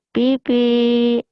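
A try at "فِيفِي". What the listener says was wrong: Vivi, udah orang Sunda mah Pipi. Vivi gitu.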